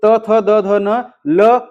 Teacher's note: और दंत से बात करते हैं दोस्तों, त थ द ध न ल और सादा वाला स